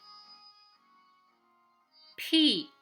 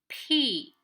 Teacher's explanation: when you put a piece of paper in front of your mouth, when you say P, the paper should be moving because of the aspiration